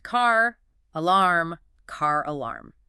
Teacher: They say ka. But when the very next word begins with a vowel like alarm, that sleeping R suddenly wakes up to act as a bridge. The phrase is pronounced car, alarm, car alarm. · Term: insertion of an R sound